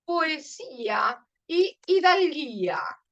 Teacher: el acento recae sobre la i sobre la i